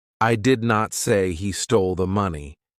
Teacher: If you stress different words, the meaning changes. Stress on I means someone else said it. Stress on he means another person stole it.